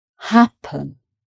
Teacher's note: So the stress is on the first syllable, happen. Okay.